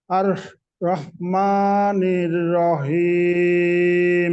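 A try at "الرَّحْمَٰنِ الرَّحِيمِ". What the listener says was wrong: দেখেন, আর রহ, রহ, হাঁটা গলাটা চেপে পড়তে হবে। আর রহ মা, খাড়া জবর আছে, তাই না? রহমানির রহিম, আপনি এখানে পড়তেছেন রহিম, এরকম পড়লে ভুল কিন্তু।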